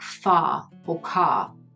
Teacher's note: We drop our jaw to make room for long sounds like a which appear in words like far or car